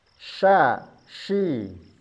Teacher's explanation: Makhraj huruf syin sama dengan huruf jim di tengah lidah. Diangkat tapi tidak bertemu dengan langit-langit mulut. Ya. Sya syi enggak boleh ditempelkan. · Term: huruf shin